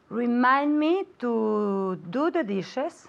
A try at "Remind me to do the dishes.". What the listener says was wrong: Very, very good. Because this is tricky, es un poco difícil, repeat at home.